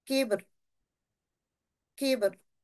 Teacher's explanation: बा को हल्का सा कलकला करेंगे और रॉ को बारीक यहाँ पढ़ेंगे